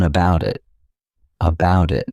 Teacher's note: I'll actually use a soft D sound and you'll hear that sound on both sides of the word. and I'll say it as one about it about it. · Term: linking